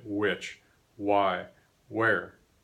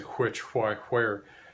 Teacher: this sound has become a w a w everywhere that it once existed